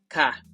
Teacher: sound is somewhere between G or K